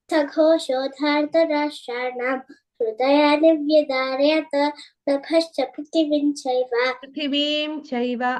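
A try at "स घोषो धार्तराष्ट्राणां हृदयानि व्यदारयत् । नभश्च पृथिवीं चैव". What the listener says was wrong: అక్కడ దీర్ఘం ఉంది వీకి. ఓకే, అది ఇందాక కూడా మిస్ చేసావు, అదొకటి కరెక్షన్.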